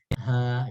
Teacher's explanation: Kalau dia ha dijabarkan kan dia cuma 2 huruf tuh, ha sama alif. Maka dia mad tabi'i harfi, 2 harokat panjangnya.